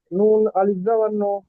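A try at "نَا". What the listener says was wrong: টান দিন। নুন আলিফ জবর না।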